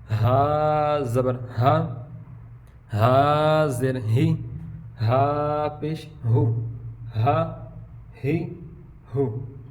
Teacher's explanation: ہا یہ سینے کی طرف سے ادا ہوگا